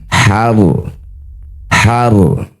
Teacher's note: ro sukun didahului fathah maka rnya harus dibaca dengan tebal setelah mengeluarkan udara di ha maka tempelkan ujung lidahnya di pangkal gigi seri atas ya langit-langit atas kemudian getarkan har har dara minal harsi Wal anami nasiban.